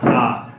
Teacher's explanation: आपसे कहेगा विवृत स्वर, विवृत मतलब जिसमें पूरा मुख खुला हो